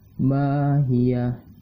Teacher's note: Ma berbaris fathah dan setelahnya terdapat alif, maka dihukumkan sebagai mad tabi'iyah dan panjangnya 2 harokat.